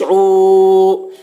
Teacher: عین واو پیش عو، واو کے اوپر واو ساکن سے پہلے پیش ہے، واو مدہ ہوا، اس لیے واو مدہ کو ایک الف کے برابر کھینچ کر پڑھیں گے